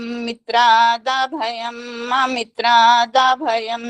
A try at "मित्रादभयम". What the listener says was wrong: अगर माँ इसमें हलंत कर दोगे तो गलत हो जाएगा।